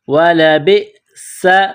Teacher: وَلَبِئْسَ، با کو حمزہ کے ساتھ ملانا ہے، وَلَبِئْسَ، سین میں سیٹی کی آواز پیدا کریں گے